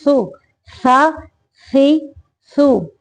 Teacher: زبان کی نوک کو اوپر والے سامنے کے دو دانتوں کے سرے سے لگا کے سا نکالنا ہے